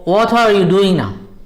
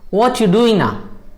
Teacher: Or what are you doing now? They would say what you doing now. So the R has just gone.